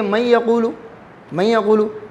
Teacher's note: اس میں نون پڑھا جائے گا، نون کا غنہ باقی ہے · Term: ناقص